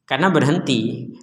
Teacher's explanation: ketika berhenti maka huruf jimnya ini menjadi sukun. Kalau jimnya menjadi sukun maka dipantulkan. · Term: memantulkan jim